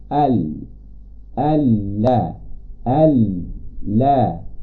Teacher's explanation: Bila mana kita lihat lidah, kita ada birai lidah, hujung lidah. Kita akan guna hujung lidah menyentuh gusi atas tempat tumbuh gigi atas depan tu. Tempat dekat tumbuh gigi tu kita tekankan lam pada tekankan hujung lidah pada tempat tumbuh gigi, maka terhasillah bunyi la. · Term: huruf lam